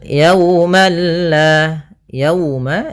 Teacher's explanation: di sini ada wau sukun didahului dengan fathah maka ini bacaan Lin yang di mana kita lembutkan dalam melafalkannya